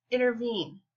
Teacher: and trophies are two syllables the antipas techfoot has three syllables the first two syllables are unstressed and the third one is stressed